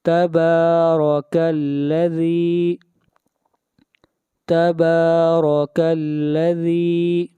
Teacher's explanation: ذال کو کھینچ کر پڑھیں گے، ایک الف کے برابر